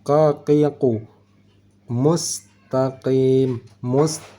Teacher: huruf q pangkal lidah dinaikan bertemu dengan langit-langit belakang